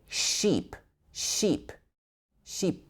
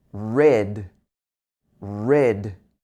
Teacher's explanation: Instead of ship, you would often hear sheep, sheep, sheep, but it should be I, I. Your tongue is at the front of your mouth, but this is a short I sound, much shorter vowel.